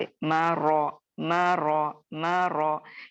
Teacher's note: मीम बारीक है, रॉ मुखफ़्फ़म पढ़ा जाएगा या मोटा पढ़ा जाएगा क्योंकि रॉ के ऊपर जबर आ रही है, और हन यानी हा जो है वो बारीक हर्फ है, तो इसको किसी भी सूरत हाल में हम बारीक ही अदा करेंगे, इसको मोटा नहीं करेंगे, ठीक है।